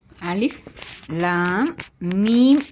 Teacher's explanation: அலிப் லாம் மீம் இதில் அலிபை அலிப் என்று தான் உச்சரிக்க வேண்டும். லாம் மீமை ஆறு ஹரக்கத்த அளவு கட்டாயமாக நீட்டி ஓத வேண்டும்